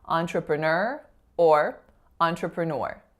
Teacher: final syllable is stressed